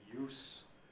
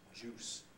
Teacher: must be careful to distinguish the semivowel from the affricate the difference between use employment and juice squeezed from a fruit